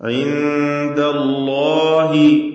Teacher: അല്ലാഹ് എന്ന ഇസ്മുൽ ജലാലയിലെ ലാമിനെ തഫ്ഖീം ചെയ്യുകയാണ് ഇവിടെ വേണ്ടത്, തടിപ്പിച്ചുച്ചരിക്കുക.